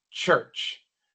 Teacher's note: Mucha gente pronuncia mal esta palabra porque quieren pronunciar la u como una u en español. U, así no se pronuncia, no es church, tampoco es church, sino church.